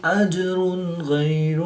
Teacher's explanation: 2 پیش کی تنوین کے بعد غین حروف حلقی میں سے ہے تو یہاں پر اظہار ہوگا